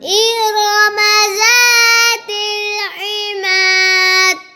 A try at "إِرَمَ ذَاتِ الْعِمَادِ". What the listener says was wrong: دال پر کلکلا نہیں کرتے عماد